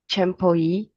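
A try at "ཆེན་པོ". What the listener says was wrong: Yeah, so far, perfect.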